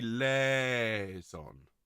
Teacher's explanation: Think more L-E-H rather than L-A-Y. Liaison. I don't want the diphthong in there.